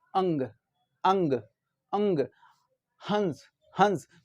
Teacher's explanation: इनके उच्चारण में नाक से तो अधिक हवा निकलती है, लेकिन मुंह से क्या होता है, कम निकलती है। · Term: अनुस्वार